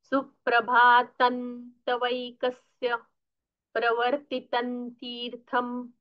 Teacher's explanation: अनुस्वार का उच्चारण न जैसा होना चाहिए